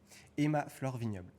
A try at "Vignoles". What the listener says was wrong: Vignol. Presque, t'as pas prononcé le S, c'est bien. Y a pas de B.